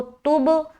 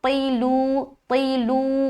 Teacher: اس کے بعد طیلو, طا زیر تی, لام وا پیش لو, طیلو. یہ تا باریک ہے تو تب, اور یہ موٹا ہے تو طیلو طیلو